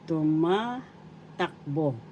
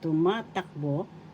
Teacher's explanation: First syllable, tu. Second syllable, ma. Third syllable, tak. Fourth syllable, bo. Tumatakbo. The second syllable has the accent.